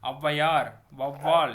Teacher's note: தனிச்சு வந்தா இது 2 மாத்திரை. ஔவையார், வௌவால் என சொற்களின் முதலில் வரும்போது தனக்குரிய 2 மாத்திரை அளவிலிருந்து குறைந்து 1.5 மாத்திரை அளவு ஒழிக்கிறது. இவ்வாறு குறைந்து ஒழிக்கும் அவுகாரம் அவுகார குறுக்கம் எனப்படும்.